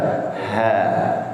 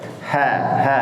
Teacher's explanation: Ha itu lebih melebar sehingga bunyinya lebih lebih keluar istilahnya.